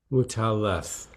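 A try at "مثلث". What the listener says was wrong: Okay, the second letter you say ta. Muthallath.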